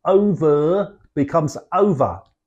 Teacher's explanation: we drop the final R in words that end in R